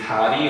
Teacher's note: 모음 사이에 올 때, 모음 사이에 리을이 단독으로 왔을 때 R로 발음해